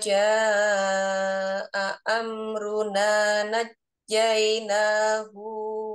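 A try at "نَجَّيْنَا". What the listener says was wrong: Najah, jangan naik ya nadanya. Najaina.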